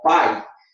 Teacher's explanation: veja que as duas vogais estão na mesma sílaba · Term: ditongo